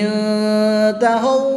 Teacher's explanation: یاد رہے کہ واؤ ساکن سے پہلے پیش ہے تو واؤ مدہ ہوگا، واؤ ساکن سے پہلے زبر ہو تو واؤ لین ہوگا۔ واؤ مدہ کو 1 الف یعنی 2 حرکات کے برابر کھینچ کر پڑھیں گے اور واؤ لین کو بغیر کھینچے پڑھیں گے